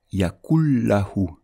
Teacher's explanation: Donc la règle d'assimilation c'est lorsque l'on va lire les 2 mots ensemble, le noun va disparaître, il ne va pas être prononcé et le lam il va prendre un shadda